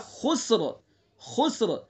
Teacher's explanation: وقف کریں گے تو را کو پر پڑھیں گے